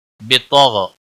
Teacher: بطغ غین کے اوپر قلقلہ نہیں ہونا چاہیے، بطغ طا کو بھی موٹا پڑھیں گے اور غین کو بھی موٹا پڑھیں گے۔